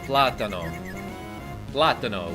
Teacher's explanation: platano with stress on the first syllable